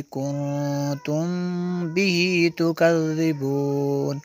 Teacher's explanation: میم ساکن کے بعد با ہے تو یہاں پہ اخفا شفی ہوگا